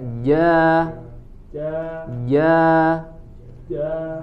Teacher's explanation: huruf Jim tidak ada angin yang keluar